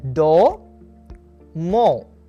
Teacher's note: O as in door, more. Your lips will be in a rounded position and tongue will be in back.